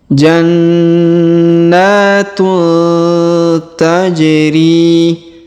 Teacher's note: Ini menunjukkan ada hukum tajwid yaitu dikolkolahkan atau dipantulkan pada huruf ja yang sukun ya. · huruf ja kita pantulkan karena berharakat sukun